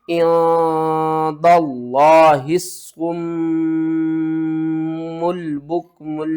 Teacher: मीम मुशद्दद के ऊपर गुन्ना करेंगे